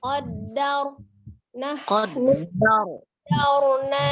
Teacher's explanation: rohnya takrir hanya sekali ya. Getaran di ujung lidah di huruf ro.